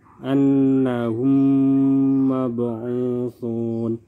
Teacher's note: jika mim sukun bertemu dengan mim maka dibaca lebur disertai dengan dengung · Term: Idgham mislain